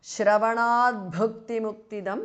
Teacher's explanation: Shravanat, the T in the end changes to D because of Sandhi.